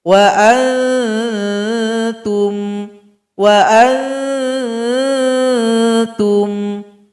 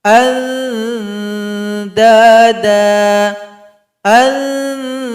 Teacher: Huruf ta, po, dan dal tempat keluarnya ujung lidah. Tempelkan ke belakang gigi seri paling atas, belakang gigi sini. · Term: ikhfa a'la